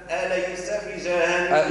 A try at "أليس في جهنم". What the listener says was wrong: لا كيف أقول أليس في جهنم شو الخطأ اللي عمله ما ثمش مد يلزم أقوله أليس في جهنم الخطأ أليس في جهنم في جهنم فيش مد الفاء ممدودة